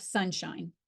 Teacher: create a valley for air flow but not touching it and both upper and lower dentals are touching and creating a narrow passage of air to flow through as the air passes through this passage it creates friction producing